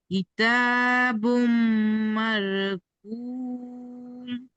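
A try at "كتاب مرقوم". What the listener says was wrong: মার, মার এখানে রটি বারিক হয়ে যাচ্ছে, মার, র মুখ গোল করে। র সাকিনের পূর্বে যাবার এসেছে, তাই রকে পুর করে পড়তে হয়। কিতাবুম মারকুম, বলেন।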